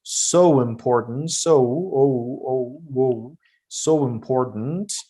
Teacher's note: So we have a W sound so that you can link the words together.